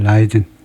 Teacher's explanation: 첫 음절에 액센트를 두고 두 번째는 약하게라는 말은 거의 모음 소리가 안 들릴 정도로 약하게